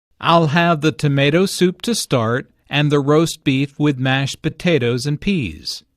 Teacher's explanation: Notice that tomato soup, roast beef, mashed potatoes, and peas are stressed because the food order is the important information here.